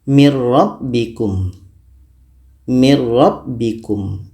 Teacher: ke ro masuknya Nun kepada ro itu secara sempurna karena murni kita baca ro saja tidak terdengar bunyi Nun lagi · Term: idgham Kamil, idgham bila gunnah